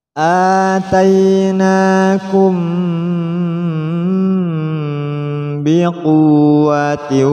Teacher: Atainakum, di sini mim mati berhadapan dengan ba, bertemu dengan ba, maka didengungkan.